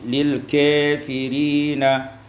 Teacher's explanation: dibaca imalah fathah kaf dan alif